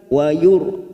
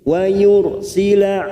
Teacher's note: ra sukun yang didahului dumah kita baca tafkhim